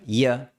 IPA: j